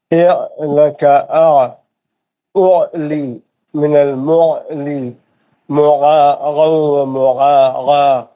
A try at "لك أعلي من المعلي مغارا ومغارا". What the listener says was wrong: پھر سے گائن کی آواز آ رہی ہے. کوشش کیجیے انشاءاللہ ہو جائے گا ٹھیک.